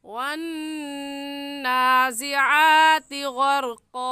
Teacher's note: वन्नाज़िआति में गुन्ना हम इस वजह से करेंगे क्योंकि नून मुशद्दद है